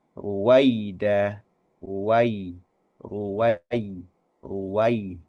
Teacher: ada bacaan vokal A diwakili oleh fathahnya huruf wawu diikuti langsung atau disambung langsung dengan vokal I. Vokal I di sini diwakili oleh huruf ya sukun. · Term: vokal A dan vokal I